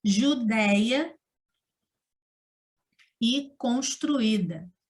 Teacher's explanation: Porque temos a junção de 2 vogais e elas se separam, ficando em sílabas separadas. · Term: hiato